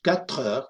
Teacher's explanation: lo único que hacemos realmente es juntar las dos palabras, pero no estamos añadiendo nada. Aquí se le llama encadenamiento, sin más.